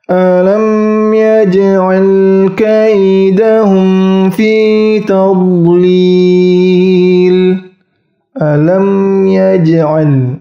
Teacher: Ja atau ja dipantulkan dengan ringan. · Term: qalqalah sughra